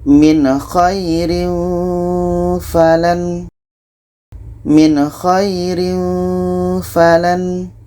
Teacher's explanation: Nun jelas, kha jelas, dan tidak ada dengung. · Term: izhar halki